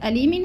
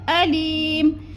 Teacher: عذاب علیم، حمزہ زبر ا، لام یا زیر لی، میم دو زیر من، عذاب علیم، ادھر اظہار حلقی، ادھر یا مدہ، یا ساکن سے پہلے لام کے نیچے زیر آ گیا تو یا مدہ، اور وقف کی صورت میں دو زیر تنوین کو ہم نے ساکن کر دینا ہے، جیسے عذاب علیم، اصل علیمن ہے، وقف کریں گے تو کیا کریں گے؟